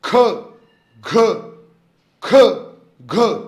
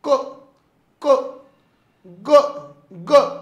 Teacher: ख म्हणल्यानंतर बाहेर फेकल्यासारखा भास होतो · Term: महाप्राण